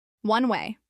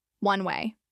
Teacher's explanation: pronounced as two words with equal stress